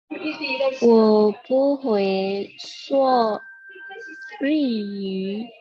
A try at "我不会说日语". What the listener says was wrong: 很好，会nya agak ditekan, yang lainnya bagus ya. Yu-nya sudah bagus sekali.